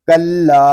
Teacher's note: کاف لام زبر کل، لام کھڑا زبر لا، کلا. لام کو ہم ایک الف تک کھینچ کر پڑھیں گے کیونکہ یہاں پہ الف مدہ ہو رہا ہے. الف مدہ اس لیے ہو رہا ہے کہ الف سے پہلے زبر آ گیا ہے.